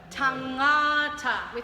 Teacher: so there's the n-g sound at the back of the throat like the word sing